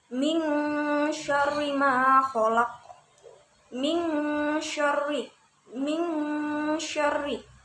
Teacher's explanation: cara bacanya yaitu samar-samar dan berdengung selama 2 harokat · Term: ikhfa